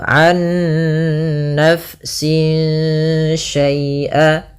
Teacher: Yang dimana dia di sini kita harus membacanya nunnya masukkan ke nun kedua dan disertai dengan gunnah. Nah, kesalahan yang terjadi tidak menahan gunnahnya an-nafsin langsung. Tapi benar ditahan dulu. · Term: idgham bi gunnah